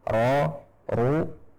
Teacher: ro yang berharokat fathah dan dhammah, ro, ru, kita baca dengan tebal